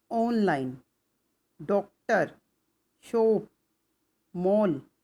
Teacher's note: आ और ओ के बीच की स्वर ध्वनि है